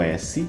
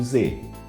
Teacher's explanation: Sem vibração. Se a gente faz exatamente a mesma articulação, mas adiciona a vibração, a gente tem o som do Z.